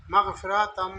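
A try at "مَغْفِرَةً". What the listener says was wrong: এর লম্বা হবে না, মাগফিরাতাম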